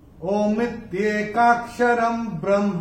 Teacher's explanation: पहले चरण में र के ऊपर अनुस्वार के बाद का अक्षर है ब, और अनुस्वार के बाद जब ब आएगा तो अनुस्वार का उच्चारण होगा म।